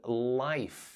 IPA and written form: laɪf (life)